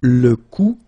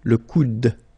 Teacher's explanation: you don't insist on this final e, it only gives you the sound of d at the end.